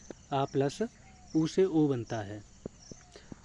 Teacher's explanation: आ का उच्चारण स्थान कंठ होता है, ऊ का उच्चारण स्थान ओष्ठ होता है, इसलिए दोनों मिलकर कंठोष्ठ बन जाते हैं।